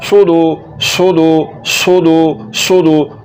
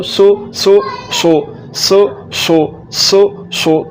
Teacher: स्वाद को पढ़ते हुए पुर करना है, ज़ुबान की जड़ को तालु की तरफ बुलंद करना है और ज़ुबान के दरमियान वाले हिस्से को तालु के दरमियान वाले हिस्से से मिलाना है।